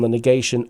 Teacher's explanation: the stress on the negation always in english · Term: stress of negation